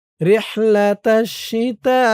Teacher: তা আলিফ জবর তা, তা এখানে ৪ আলিফ টান, মধ্যে মুত্তাসিল।